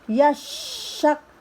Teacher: Lama 2 harokat. Yashak, shinnya sya besar dibaca ditekan dulu karena ada tasydid.